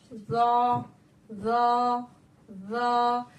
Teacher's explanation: जबान की नोक को, रासे लिसान को हमें अपने सामने वाले दांतों के सिरे से लगाना है और जबान के पिछले हिस्से को तालु की तरफ ऊंचा करना है, बुलंद करना है। · जबान के पिछले हिस्से को तालु की तरफ ऊंचा करना है, बुलंद करना है। तो ऐसा करने से हमारा हर्फ जो है वो मोटा हो जाएगा और हमारा आगे का जो मखरज है, यानी हमारे जबान की नोक, वो कहाँ लगेगी?